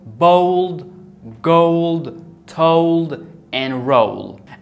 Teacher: the o l together are pronounced as o